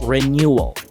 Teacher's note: The W sound in the middle of the word was directly connected to the L sound with a schwa.